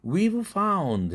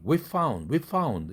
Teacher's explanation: 그렇게 되면 성대의 진동을 떨다 갑자기 안 떨어야 되니까 뒤에 안 떠는 found 할 때 f라는 무성음이 앞에 떠는 v에게 너도 떨지 마. 미리부터 떨지 마. 이런 얘기죠. 나 닮아. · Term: 역행으로 동화